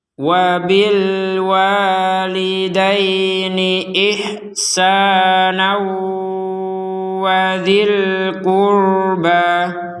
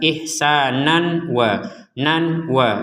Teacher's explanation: Ketika kita menggabungkan kata ihsana ini kepada kata berikutnya, karena di sini tanwin fathatain bertemu wawu, maka kembali menjadi fathatain. Bertemu dengan wawu, maka kita masukkan disertai dengungan.